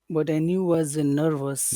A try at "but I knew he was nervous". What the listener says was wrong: Don't forget the E. That's the only reason I know you're saying he, because you have a big long E there, but I knew he.